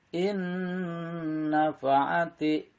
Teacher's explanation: huruf nun ini punya sifat yaitu mendengung, ya, maka dibacanya harus ditambah, yaitu ditambah mendengung atau ditahan 2 sampai dengan 3 harokat. Maka oleh karena itu untuk nun mati bertemu nun hidup dinamakan idgham mutamasilain ma'al gunnah, atau dia lebih dikenal dengan idgham bigunnah ya.